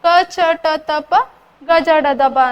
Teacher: ಸ್ವಲ್ಪ ಪ್ರಾಣ ಸ್ವಲ್ಪ ಉಸಿರಿನಲ್ಲಿ ಅಂತಂದ್ರೆ ಕಡಿಮೆ ಸಮಯದಲ್ಲಿ ಉಚ್ಚಾರಿಸಲ್ಪಡುವ ಅಕ್ಷರಗಳೇ ಅಲ್ಪ ಪ್ರಾಣಗಳು